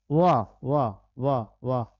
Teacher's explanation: दंतोष्ठ यानी जिसका दांत और ओठ दोनों से उच्चारण होता है